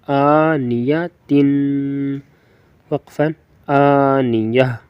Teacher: آ کو لمبا کرنا ہے اور تین کو لمبا کرنا ہے